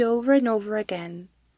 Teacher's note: using the r sound in between the words over and again, although in British pronunciation we should say over without the r sound.